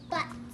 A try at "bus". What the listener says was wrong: No, it's bus, not butts. It's bus. B-U-S, bus.